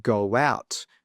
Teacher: We add a W between the go and the out.